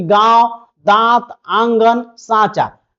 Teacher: जिस ध्वनि के उच्चारण में हवा जो है नाक और मुख दोनों से निकलती है उसे अनुनासिक कहते हैं। इनके उच्चारण में लघुता, हल्कापन होती है, जिससे जिनका उच्चारण नाक और मुंह दोनों से होगा।